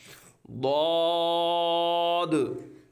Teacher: यह दवाद हर्फ हाफी है जबान की करवट और ऊपर की दाढ़ की जड़ से अदा होता है